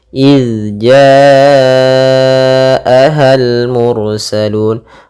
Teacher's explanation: Yang mengalir adalah suaranya saja, tidak ada nafasnya, tidak ada suara, tidak ada mengalirnya nafas, tapi hanya mengalirnya suara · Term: zal sukun